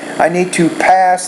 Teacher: you need to pronounce that P with more air.